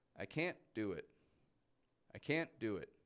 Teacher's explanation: there's a quick little pause after the word can't isn't there my voice raises up a little I can't do it and then it goes down do it